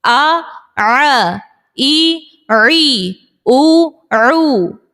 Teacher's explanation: عین زبر آ پڑھتی ہیں, آ نہیں ہے, حلق کے درمیان سے ہم ادا کریں گے. آ ع, ای عی, او عو.